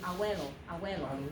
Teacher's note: frequently you actually just say a W, abuelo, like that, okay, and you don't even do the B, but you get every vowel in there, but maybe not every consonant.